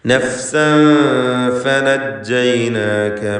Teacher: നഫ്സ ഇഖ്ഫ ഹഖീഖി എന്ന നിയമം അനുസരിച്ച് അവ്യക്തമാക്കി മണിക്കുക. ശേഷം ഫ വന്നു.